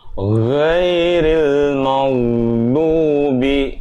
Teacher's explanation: mimnya dibaca kalau tipis jangan mo tapi ma